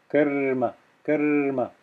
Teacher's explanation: i'm adding a little bit extra voice or a little bit extra time to the the ra sound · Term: conjoined consonants